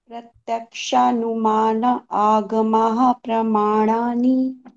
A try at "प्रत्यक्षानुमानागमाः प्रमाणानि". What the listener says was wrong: नहीं प्रत्यक्ष, वो जो आप न में आ की मात्रा भी लगा रहे हैं और आगम भी बोल रहे हैं वो गलत है, प्रत्यक्षानुमानागमाः